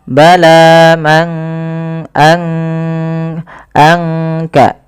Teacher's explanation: tidak kita baca man kasaba, tapi disamarkan suara nunnya kepada huruf kaf. Mangka anka langsung kepada makhraj daripada huruf kaf itu sendiri. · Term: ikhfa